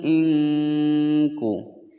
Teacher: Nun sukun bertemu dengan kaf, hukum bacaan ikhfa disamarkan dan didengungkan selama dua ketukan